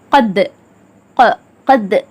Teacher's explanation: தால் கல்கலாவின் எழுத்து. இருமுறைகள் அசைச்சு அதட்டி கல்கலா செஞ்சு ஓதணும். கத், கத், அந்த சவுண்டோட முஸ்தாலியாக்கான சவுண்ட் கத், அந்த மாதிரி ஓதணும் கல்கலா செஞ்சு.